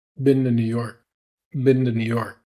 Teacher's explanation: I'm saying binde with a D, but in reality it's a very, very soft D. And we can do that when we have the word to after an N.